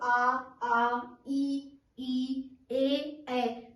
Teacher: इसमें हमारे अर्धवृत्त मुखी में हमारे ओष्ठ गोलाकार नहीं होते इसमें, जैसे आ, ई, ए, तो इसमें हमारे ओष्ठ गोलाकार नहीं हो रहे हैं, तो ये हमारा अवृत्तमुखी है।